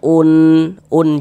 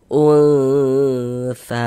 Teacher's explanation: Jadi di bagian unnya itu suaranya itu kita tahan kita panjangkan sejenak sepanjang dua harakat.